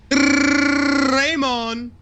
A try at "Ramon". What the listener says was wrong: It's Ramon. His name is Ramon. There's no Y in his name.